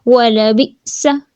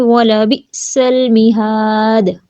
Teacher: بی پڑھتے پڑھتے سانس اور آواز کو روک دیں گے